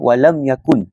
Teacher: huruf mim itu bertemu dengan huruf ya dalam perkataan walam yakun. Mim tersebut dibaca jelas tanpa dengung.